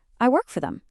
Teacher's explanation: It's like the ed sound just vanished into thin air.